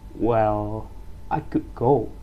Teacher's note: voice falls and then rises again, showing that we are unsure or trying to be polite